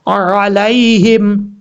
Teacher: اس کے بعد ہا جو ہے یہ ہا بھاری ساؤنڈ کے ساتھ پڑھا جائے گا، اس کو بریک نہیں پڑھنا